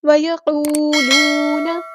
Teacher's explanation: نون کی زبر کو لمبا نہیں کریں گے